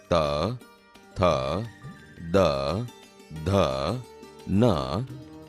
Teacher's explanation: ત, થ, દ, ધ, ન જેવા વ્યંજન બોલતી વખતે જીભ દાંતને અડે છે, આથી તે દંત્ય વ્યંજન છે